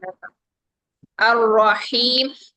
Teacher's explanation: हा ठंडी सांस के साथ निकालिए